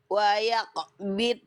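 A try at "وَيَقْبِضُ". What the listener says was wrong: Nah, kalau yang ini nggak mantul. Tapi apa kesalahannya? Yang ini nggak mantul, Bunda. Tapi apa kesalahannya? Poin 2. Suara huruf dotnya terputus. Nah, ini pun nggak boleh. Nah, nggak boleh putus. Putus. Waya kobit. Nah, sedangkan huruf dot itu suaranya nih rokhawah. Mengalir. Jadi nggak dibaca waya kobit. Nah, tapi kita baca waya kobit.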